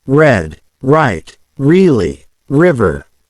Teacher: the tongue doesn't touch the roof of your mouth and the sound is created by the air flowing over the tongue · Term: English R, r sound